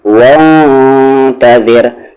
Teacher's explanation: یہ را ہیوی نہیں بلکہ لائٹ ہوگا کیونکہ اس کی آواز نیچے جا رہی ہے